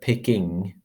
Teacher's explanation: that's the velar nasal phoneme in standard english